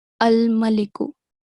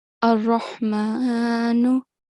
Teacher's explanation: even though there is a lam, the sound is completely merged and you cannot hear it